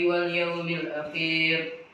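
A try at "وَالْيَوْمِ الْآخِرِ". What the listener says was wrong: Wal yaumil akhir, bukan akhir. Enggak panjang akhirnya. Wal yaumil akhir.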